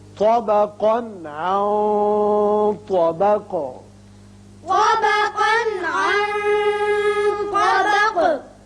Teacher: طا کو پر پڑھیں گے طا، اور قاف کو بھی پر پڑھیں گے، لیکن اس کی جو تنوین کا نون ہے اس کا اظہار ہوگا آگے، چونکہ عین حروف حلقی میں سے آ گیا. اس نون پر اخفا کریں گے اور آگے طا حروف مستعلیہ میں سے ہے، لہذا اخفا کی آواز ذرا پر کر کے ادا کی جائے گی اور قاف ساکن کر دیں گے.